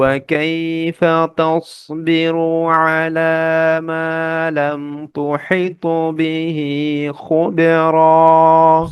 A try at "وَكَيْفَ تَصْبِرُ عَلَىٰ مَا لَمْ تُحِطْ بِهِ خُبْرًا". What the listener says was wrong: খুটা আসতেছে না গলার শেষ থেকে একদম হ্যাঁ